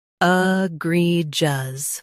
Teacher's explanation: Stress gree. Keep soft and finish with jus clearly.